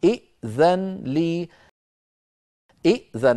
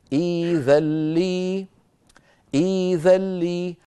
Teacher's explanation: يبدلون الهمزه الساكنه ياء مجانسه للكسره قبلها فبدل من ان يقولوا ائذن يقولون كما نرى في الصوره الثالثه